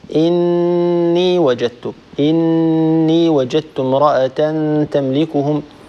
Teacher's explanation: أن تطيل زمن الغنة في النون والميم المشددتين والمضغمتين. · نون مشددة، طول الغنة فيها أكثر